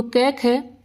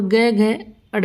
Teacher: कै, ख ये दोनों अघोष है, और ग, घ, अड़ ये तीनों क्या है, सघोष है